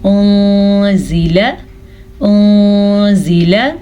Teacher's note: نون ساکن کے بعد زا حروف اخفا میں سے آیا ہوا ہے تو اسی لیے ہم نون ساکن کو چھپے غنے کے ساتھ پڑھیں گے